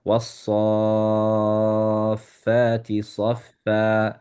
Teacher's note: So you don't pronounce the Hamzatul Wasl.